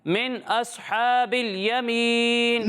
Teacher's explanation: پیارے بچوں صاد کو پر پڑھنا ہے.